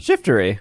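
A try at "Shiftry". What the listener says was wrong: It's 2 syllables, not 3. Shiftery. No. Shiftery.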